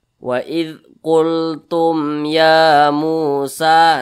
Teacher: jangan dipanjangkan tumnya, itu salah. Tapi dibaca pendek ya, dibaca jelas.